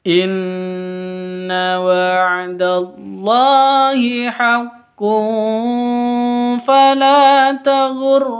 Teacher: tanwin bertemu dengan Fa cara bacanya samar didengungkan dua ketuk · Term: ikhfa Hakiki